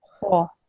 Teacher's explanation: just try to make it slightly more rounded. So instead of saying ha, say ho.